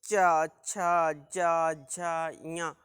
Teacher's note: हमारी जिह्वा ऊपर तालु में, अर्थात जहाँ खुरदरे भाग से चिकना भाग जो होता है वहाँ स्पर्श करती है · जैसे बोलेंगे चा छा जा झा या, तो ये हमारी जिह्वा जो है ऊपर हमारे तालु को स्पर्श करती